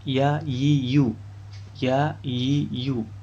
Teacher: Makhraj huruf ya adalah tengah lidah mengenai langit-langit ya di atasnya. Ya. Tengah lidah mengenai langit-langit di atasnya.